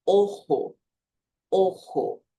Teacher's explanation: Apareceu a letra O ali, você vai fechar o som.